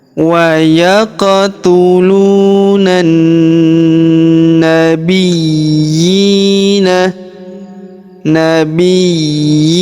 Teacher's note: ditekan ya karena terdapat tanda tasdid lalu kita panjangkan dua harakat karena alif kecil di bawahnya